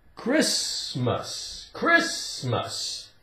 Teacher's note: The T is silent.